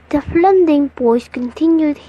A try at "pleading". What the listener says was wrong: Pleading was mispronounced again as plending.